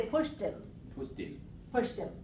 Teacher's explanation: When we're making a linking for pushed him, just like we do for pushed it, we link it with a T sound here, and then the H disappears. We don't need to say him.